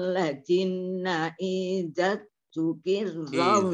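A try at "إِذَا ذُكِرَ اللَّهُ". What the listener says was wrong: Iza zukirallahu. Zanya panjang.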